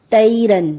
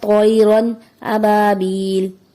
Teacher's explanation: طَیْرًا، طا میں عموماً مسٹیک جو یہ ہوتی ہے طا کی جگہ تا کی ادائیگی ہو جاتی ہے جیسے تیرن، جو کہ درست نہیں، درست ادائیگی ہے طَیْرًا ابابیل۔